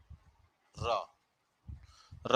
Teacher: यह घोष है, या इसी को हम कह सकते हैं सघोष। चाहे घोष कह लो चाहे सघोष कह लो, बात एक ही है, यह सघोष है।